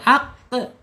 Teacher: ada di asyidah ya tertahannya suara ketika diucapkan